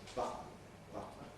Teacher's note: button with a vowel between the T and the N is in danger of sounding childish · the old-fashioned kind of ‘nasal release’, [ˈbʌtn̩], where you hear the … noise of ‘nasal release’